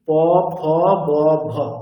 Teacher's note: দুটো ওষ্ঠ দেখুন স্পর্শ করছে, একেবারে দুটি ঠোঁট, উপরের ঠোঁট নিচের ঠোঁট পুরোপুরি স্পর্শ করছে। তাহলে এইভাবে যে বর্ণগুলো উচ্চারিত হয় সেটা কি, তাদের উচ্চারণ স্থান হচ্ছে ওষ্ঠ।